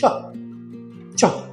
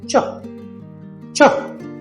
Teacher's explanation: The ch sound is shorter and stronger. Think ch, ch, like a sudden explosion and then a stop, not a shh, air escaping from your tongue.